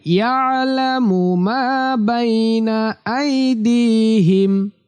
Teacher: এই আইনটা কণ্ঠনালী বা হলকের মাঝখান থেকে উচ্চারিত হবে।